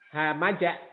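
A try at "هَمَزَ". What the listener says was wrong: Hamaza. Nggak ada tasdid. Pak, hati-hati zainya katanya tadi ya. Zai, hamaza.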